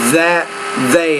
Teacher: be careful that interdental voiced consonant